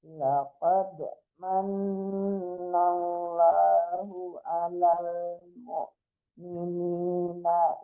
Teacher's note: laqad dipantulkan dalnya man tasdid nunnya